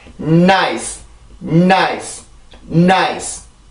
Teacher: 지금 이 코가 울리는 소리가 있어요. 이런 소리가 들어가 있는데 아주 길지도 않고 아주 짧지도 않아요. 내가 강세까지 갈 만큼만 소리가 나요.